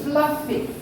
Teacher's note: Teeth on the lips. Unvoiced.